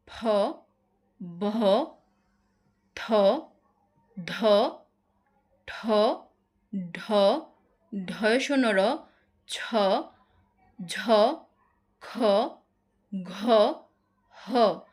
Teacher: মহাপ্রাণে বায়ু প্রবাহের মাত্রাটা অপেক্ষাকৃত বেশি